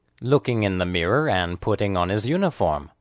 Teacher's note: The emphasized words are looking and mirror. Remember that long words are stressed on only one syllable.